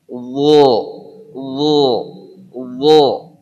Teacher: Ini contoh kondisi itbaq. Jadi pangkal lidah naik hampir kepada langit-langit, bagian depan juga tertutup sehingga hurufnya ngumpul di tengah-tengah